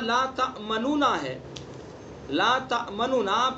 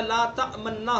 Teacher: پہلے نون کو ساکن کر کے دوسرے نون میں اس کا ادغام کیا اور دونوں کا ایک بنا دیا۔ ادغام کی تعریف یہی تو پڑھی ہے نا آپ نے، کہ دو حرف اس طرح ادغام کریں کہ جس میں دونوں حرف ایک بن جائے، تو یہاں لا تأمنونا ہے، لا تأمنونا پہلے نون کا دوسرے نون میں ادغام کیا، دونوں کا ایک بنا دیا، لا تأمننا ہو گیا۔